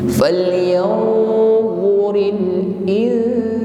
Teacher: Falyanzuril berikutnya mengucapkan nun sukun kita samarkan pada huruf sin dengan berdengung, namun berdengung di sini ringan. Falyanzuril insanu bertemu lagi dengan mim tasydid kita dengungkan.